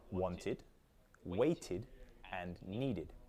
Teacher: then the ed ending is pronounced id